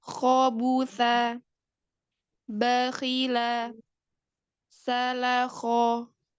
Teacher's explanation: fathah itu berkonsonan O maka ketika fathah dia bunyinya konsonan O ini didapatkan dengan pangkal lidah yang naik bukan bibir yang mengerucut jadi bibir itu tidak bergerak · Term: huruf kho